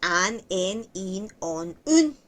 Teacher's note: cuando decimos an, en, in, on, un, pero cerradito, como en francés, vamos a sonar casi todos igual porque las vocales también por separado suenan básicamente todos igual.